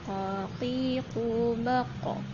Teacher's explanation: Nah, ketika sukun huruf qafnya dipantulkan. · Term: qalqalah